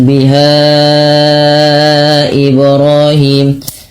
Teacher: Ha dipanjangkan sepanjang empat atau lima harakat yang di mana di sini terdapat hukum tajwid berupa mad jaiz munfasil yang di mana terjadi ketika adanya mad thabi'i bertemu dengan hamzah dan posisi hamzah berada di lain kata.